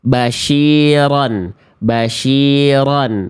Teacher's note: Kalau syin itu di tengah lidah udah pindah makhraj